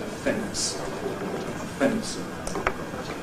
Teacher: many speakers insert an epenthetic plosive between the /n/ and the /s/ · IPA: /fents/